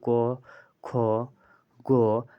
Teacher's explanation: ये सारे के सारे क से क वर्ग क से कंठ उच्चारण स्थान हो जाते हैं